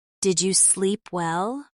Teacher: The tone goes up slightly at the end.